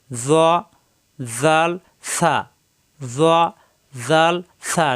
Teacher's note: জিহ্বার আগা উপরের দুই দাঁতের আগার সঙ্গে লাগাইয়া নরম করে উচ্চারিত হয় জাল ছা জিহ্বার আগাটা একটু বের করে উপরের দুই দাঁতের আগায়